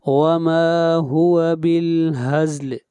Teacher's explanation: ما کو کھینچ کر پڑھیں گے 1 الف کے برابر، مد اصلی ہے